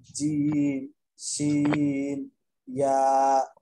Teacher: জি 6 নম্বর মাখরাজ। জিহ্বার মধ্যখান তার বরাবর উপরের তালুর সঙ্গে লাগাইয়া উচ্চারিত হয়